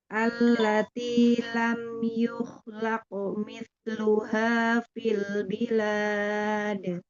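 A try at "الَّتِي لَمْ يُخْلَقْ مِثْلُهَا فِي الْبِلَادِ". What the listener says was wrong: Ya, dilatih lagi ya, Bun, untuk huruf ta-nya, dialirkan.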